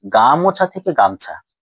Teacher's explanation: তাই গা অক্ষরে যদি প্রবল ভাবে শ্বাসাঘাত পড়ার কারণে মাঝখানে যে স্বর রয়েছে ময় ওকার যে ও স্বরধ্বনিটি সেটি কিন্তু লোপ পেয়েছে। তাই এখানে গামোছা থেকে গামছা এই ধ্বনি পরিবর্তনটি শব্দটির মধ্যে যে ওটি রয়েছিল সেই ওটি কিন্তু লোপ পেয়েছে। তাই গামছা হচ্ছে মধ্য স্বরলোপের উদাহরণ।